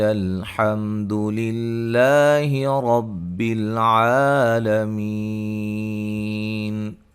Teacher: حمد للہ لفظ اللہ کے لام کو باریک، رب را کو موٹا